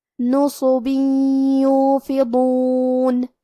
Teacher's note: یا حروف الادغام بغنہ میں سے ہے اور ادغام کا معنی ہے حرف کو حرف میں داخل کرنا، لہذا ہم یہ تنوین کو یا میں ملا کے غنہ اور تشدید کے ساتھ یہ حکم کو ادا کریں گے